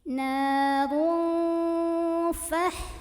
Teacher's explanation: tanwin dhammah ini dibunyikan samar-samar mau bilang fa sambil dengung. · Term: ikhfa awsat